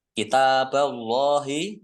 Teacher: Allahnya dibaca tebal karena harokat di depannya fathah. Lam fathah berdiri mat tabi'i panjang 2 harokat.